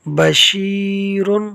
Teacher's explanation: شین کو یا مدہ کی وجہ سے کھینچا ہے